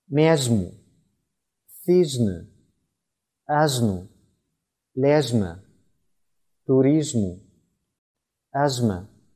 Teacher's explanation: 舌尖抵住上齿龈较后部分，舌背部抬向硬腭，形成狭长通道，气流通过时引起摩擦发声，发音时声带震动